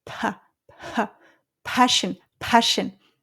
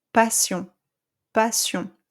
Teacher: see you hear that burst of air coming out